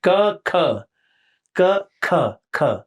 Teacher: लेकिन क में पेपर नहीं हिलेगा, ख में ख पेपर हिलेगा